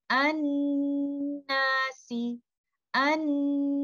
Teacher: stretch the Ghunnah for the longest time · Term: most complete Ghunnah